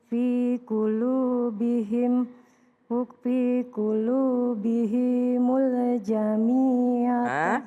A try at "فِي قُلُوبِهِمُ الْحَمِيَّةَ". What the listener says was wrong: Enggak ada titiknya, ha itu huruf ha. Fi qulubihimul hamiyata. Ya, jadi kalau berhenti ta-nya berubah menjadi ha karena ta marbuthah.